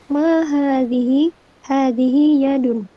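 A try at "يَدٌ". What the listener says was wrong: Yadun, ya, enggak panjang, bukan yadun, tapi yadun.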